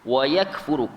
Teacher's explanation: kaf tu sukun kan, dan kaf itu bersifat dengan hamas, dia bunyi angin